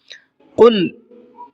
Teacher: قاف کو منہ بھر کے پڑھنا ہے